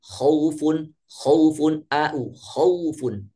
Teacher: huruf waw dan ya yang dalam keadaan sukun yang didahului oleh fathah, maka dilafazkan atau dilafalkan dengan lembut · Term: lin